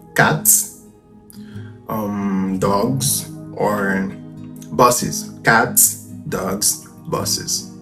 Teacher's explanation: If you're writing them down on a page, you're gonna see you just add an S out loud, but they don't really match if you're pronouncing them, because cats and an S sound, dogs in a Z sound, and buses gets, I would say, an extra vowel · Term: allomorphs